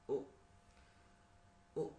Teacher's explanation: the position of your tongue in high position, and U in back position, roundedness, rounded U